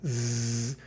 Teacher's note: Z, that's maybe the most conspicuous, and you make that sound zzz, you can feel the buzzing, I mean, literally.